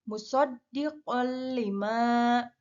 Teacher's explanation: dengan memasukkan huruf tanwin qaf ke dalam huruf lam tanpa disertai dengung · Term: idgham bila gunah